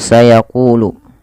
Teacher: Pada lafal qu ada mad thbi'i ditandai dengan huruf qof yang berharakat domah bertemu wau. Maka panjangnya qu dibaca dua harakat. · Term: mad tabi'i